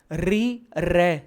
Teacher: दांतों से थोड़ा ऊपर, मसूड़ों से जीभ टकरा रही है